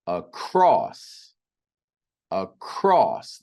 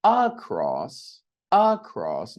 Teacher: The second syllable cross is emphasized. We don't say across. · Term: stressed syllable